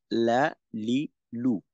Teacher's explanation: জিওভার আগার কিনারা সামনের উপরের দাঁতের মাড়ির সঙ্গে লাগিয়ে উচ্চারিত হয় লাম